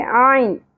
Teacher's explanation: عین وسط حلق سے باریک آواز میں ادا کرنا ہے.